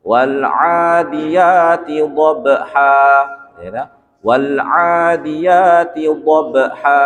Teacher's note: maka dia dibaca dobha satu saja tapi panjang satu ayunan atau 2 harokat